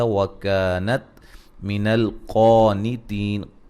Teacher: وکانت من القانتین، کا الف مدہ ہے، قاف کو موٹا ادا کریں گے یہاں اور الف مدہ کے برابر اس کو پڑھیں گے، یعنی کہ ایک الف کی مقدار کے برابر لمبا کریں گے. مد اصلی ہے.